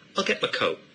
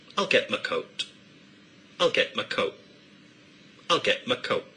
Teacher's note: a glottal stop is used in place of the t in both get and coat